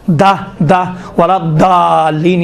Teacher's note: دال اور ضاد میں فرق ہے، دال تھوڑا سا باریک ہے، ضاد اسی دال کو تھوڑا غلیظ بناؤ، موٹا بناؤ تو ضاد بن جاتا ہے۔